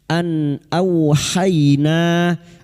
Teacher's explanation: Berikutnya nun sukun bertemu hamzah sama idhar halqi, nun sukun atau tanwin yang bertemu dengan huruf hamzah. Idhar halqi nun sukun dibaca jelas tanpa mendengung.